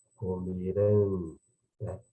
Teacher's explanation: Tonicidade forte, oxítona na última sílaba, né?